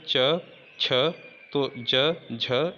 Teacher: जीभ ऊपरी हिस्से से टकराती है जहाँ तालु होता है। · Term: तालव्य